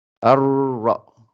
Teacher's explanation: Euh, quand vous avez, quand vous avez un soukoun, parce qu'il y en a qui le font pas toujours, euh, quand vous avez un soukoun, par exemple le ra enfin plutôt avec shadda, le ra avec shadda, donc ça veut dire que vous avez un ra qui est doublé.